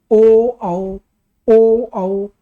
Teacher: ओ औ होंठ काम कर रहे हैं और कंठ से आवाज निकल रही है। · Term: कंठोष्ठ